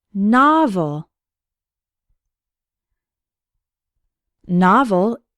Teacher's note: novel has two syllables and the stress is on the first one